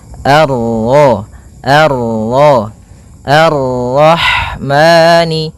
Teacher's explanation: Pada bacaan Ar-Rahmani di sini ada alif dan lam di awal bacaan, maka kita baca dengan bacaan al sebagaimana yang di atas, al. Kemudian ini bertemu dengan huruf ra yang berharakat tasydid, maka ra-nya kita baca dengan tafkhim